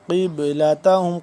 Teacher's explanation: قاف موٹا اور با کو ہم کریں گے قلقلہ